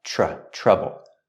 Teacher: the vowel in trouble is a short uh sound like up and cup